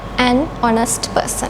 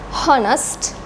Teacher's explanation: this H is silent in these words we don't pronounce the H sound here